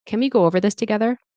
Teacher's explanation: So it's the get that has the stress, together. And then we're rising on together. It's a collaborative request.